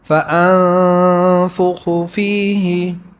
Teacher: نون ساکن ہے اور آگے حروف حلقی نہیں ہے اس لیے اس میں اخفا یعنی غنہ ہے